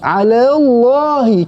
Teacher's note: Yang tebal cuma Allah saja. Lam tu yang pertama Allah tu tak perlu tebal.